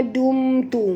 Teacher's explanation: Ma asli dum, mim mati bertemu ta, tak boleh dengung, izhar syafawi